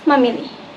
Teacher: instead of saying mampili, the P drops out and it becomes mamili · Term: deletion of voiceless consonants